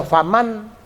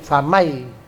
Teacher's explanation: Nun matinya masuk ke huruf ya Enggak boleh lagi Dibaca faman tapi jadi famai itu namanya Idam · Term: idgham